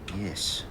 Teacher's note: We're hearing the high mid dress vowel in the word yes.